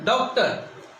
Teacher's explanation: न तो इसको डा की ध्वनि निकलती है न डो की ध्वनि निकलती है, बल्कि डॉक्टर। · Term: आगत की ध्वनि